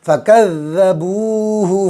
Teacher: فَكَذَّبُوهُ فَعَقَرُوهَا، فکذ ذال پر تشدید ہے، ذال کو 2 مرتبہ پڑھیں گے، ایک مرتبہ کاف سے ملائیں گے، ایک مرتبہ خود سے